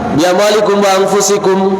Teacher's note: Dekatnya makhorid antara mem dengan wawu. Wawu dari kedua bibir, mem pun juga dari kedua bibir.